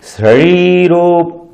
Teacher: शरीरोप, अब शरीर में कौन सा सा है? यहां पर तालव्य शकार है, तो जीभ आपकी मुड़ेगी नीचे की ओर थोड़ा सा